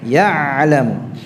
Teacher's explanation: Lantangkan bunyi ainnya ya, jahr.